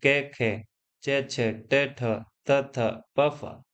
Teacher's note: अघोष वर्ण यानी ऐसे वर्ण जिनके उच्चारण में स्वर तंत्रियों में कंपन नहीं होता है